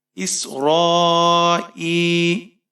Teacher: را کے اوپر کھڑی زبر ہے اور مد متصل ہے، اسے ہم 5-6 الف تک کھینچ کر پڑھیں گے، یعنی 5-6 سیکنڈ تک۔